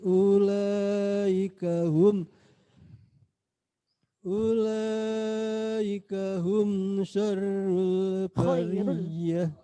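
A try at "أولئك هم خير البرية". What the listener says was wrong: Khairul. Anu nggih, karena memang ini hati-hati kalau baca Al-Bayyinah itu ada ulaika hum syarrul sama khairul nggih.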